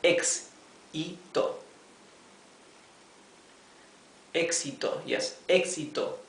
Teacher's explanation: Has 3 syllables, éxito, and the tilde or the accent of the word éxito is in the 3rd syllable starting from the last